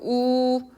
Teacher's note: 입술이 어떻게 되나? 동그래집니다. 그러면 원순 모음이 돼요.